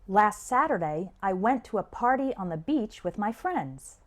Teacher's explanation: when spoken naturally the stress is on the words saturday went party beach and friends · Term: sentence stress